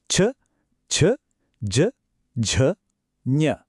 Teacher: ನಾಲಿಗೆಯ ಮಧ್ಯಭಾಗ ಮೇಲೆ ಹೋಗಿ ಬಾಯಿಯ ಮೇಲ್ಛಾವಣಿಗೆ ತಟ್ಟಿದ್ದು ಗಮನಕ್ಕೆ ಬಂತಾ ಅದೇ ತಾಲವ್ಯ ಧ್ವನಿಗಳ ಹುಟ್ಟು